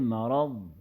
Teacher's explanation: ضاد میں صفت رخوت ہے جس میں آواز جاری ہوتی ہے. اس میں صفت مستطیل بھی ہے استطالت یہ حرف مستطیل ہے اس میں درازی ہے مخرج میں.